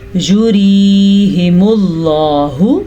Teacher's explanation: اللہ کے نام سے پہلے پیش آ گیا ہے تو اللہ کا نام ہم نے لفظ اللہ کو پر یعنی کہ موٹا کر کے پڑھنا ہے